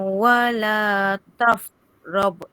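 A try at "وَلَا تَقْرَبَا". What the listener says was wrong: Okey, ni huruf apa ni? Tertukar huruf tu. Qaf. Wala taqraba.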